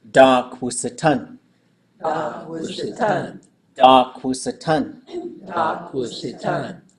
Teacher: We want to make sure that dak is staying nice and low. And then wusatan, we've got it nice and short, and it's high. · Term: the tone, the length